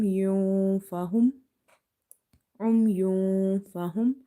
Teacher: So noon sakin or tanween, if there is noon sakin and tanween and after this you see the ikhfa letters, you hide the sound of such noon sakin and tanween. So instead of saying yun, you will say yun fahum, yun fahum.